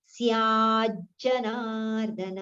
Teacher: स्या we have to prolong a little, so automatically the partial ja comes towards the end of ya